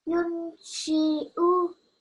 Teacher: Just make this sheen less long because it's just a kasra.